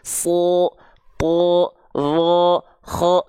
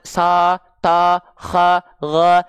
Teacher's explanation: kalau huruf tebal ketika fathah huruf yang keluar bunyi vokalnya bunyi vokal o kedengarannya condong ke o